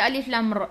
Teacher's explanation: Huruf ra ni takrir, kena ada getaran. Maksudnya takrir tu maksud dia berulang-ulang.